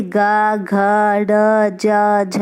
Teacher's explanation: जिन व्यंजनों के उच्चारण में स्वर तंत्रियों में कंपन पैदा होता है उन्हें सघोष व्यंजन कहते हैं।